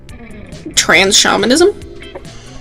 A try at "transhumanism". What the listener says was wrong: Transhumanism. I don't know where you got shamanism. Yeah, but you said trans shamanism, so you You added an extra S.